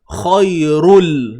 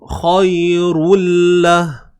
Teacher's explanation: Idgham ni memasukkan. Kita masukkan bunyi tanwin ni, asalnya lah bunyi tanwin ni ke dalam lam. Masuk secara sempurna. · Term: Idgham bila gunnah